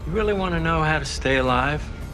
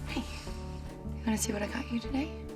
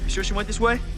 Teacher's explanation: he does not ask do you really want to know instead he simply phrases it as an affirmative statement but with the same intonation of a question